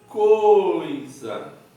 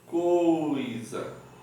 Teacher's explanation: Percebe que do O, que é mais forte, vai para o I, que é mais fraco. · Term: ditongo